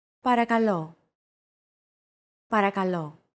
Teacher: Don't forget that words get accentuated in Greek, so make sure to stress that final syllable with the accent mark